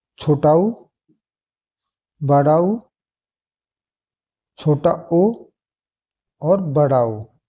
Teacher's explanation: अगर हम इनका उच्चारण करते हैं तो जो हमारे होठ की आकृति है वो हो जाती है वृत्ताकार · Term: वृत्ताकार स्वर